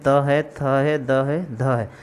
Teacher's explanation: इसमें जीभ का अग्र भाग ऊपर के दांतों को स्पर्श करता है और स्पर्श करने के बाद जो ध्वनि उत्पन्न होता है उसे हम डेंटल साउंड कहते हैं।